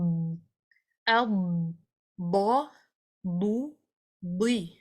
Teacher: اس کو ہیوی رکھنا ہے. اس میں استطالہ ہے، مطلب زبان پھسل کے تھوڑا سا آگے کی جانب آتی ہے. اس کے آگے آنے کے ساتھ ساتھ مخرج بھی لمبا ہوتا ہے اس کا، مطلب آواز بھی آگے کی طرف ٹریول ہوتی ہے.